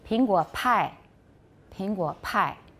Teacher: You have stronger aspiration in Mandarin.